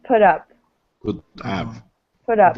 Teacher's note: When we say put in English, if it's followed by another word, this T sound, and this is especially for Americans, we tend to pronounce this as a D. So just put up.